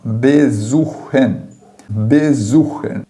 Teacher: Toda vez que aparecer o S, você vai pronunciar como se fosse um Z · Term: som de Z português